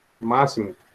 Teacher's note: As proparoxítonas. A antepenúltima sílaba é a mais forte.